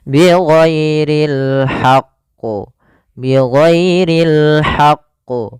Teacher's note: karena dia ada huruf tasydidnya, ditekan dulu qafnya baru ditasydidkan. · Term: qalqalah kubra